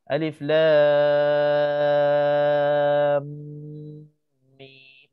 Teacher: Walaupun kita dah panjang lam, harakat lam, sebelum nak panjang mim 6 pula, kena ada dengung 2 harakat antara lam dengan mim tu